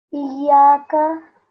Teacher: here you have to emphasize on the ya, because it's a ya mushaddad.